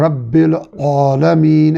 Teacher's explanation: را کو ہم نے پڑھا کہ را کو موٹا پڑھنا ہے، با پہ تشدید کو ہم نے سمجھا کہ رب با کو 2 بار پڑھنا ہے، رب العالمین، عین کو حلق کے درمیان لے جائیں گے